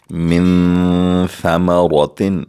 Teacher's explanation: ہم نون ساکن کے بعد آواز ناک میں لے جا کر 2 سیکنڈ کے لیے غنہ بھی کریں گے، اخفا بھی کریں گے، کیونکہ ثا حروف اخفا میں سے ہے.